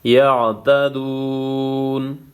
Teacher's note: وقف کی صورت میں نون کو ساکن کرنا ہے،